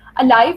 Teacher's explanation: अलाइव में अ is unstressed and लाइव is stressed